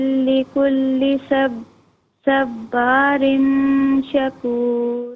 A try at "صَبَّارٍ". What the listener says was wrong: سواد کو ذرا پر پڑھیں، صبارن، ٹھیک ہے، صبارن. با نارمل ہوگا اور سواد کو پر پڑھیں گے.